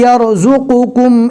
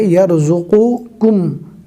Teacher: کاف کو نارمل پڑھنا ہے اور قوف کو حلق سے ادا کرنا ہے۔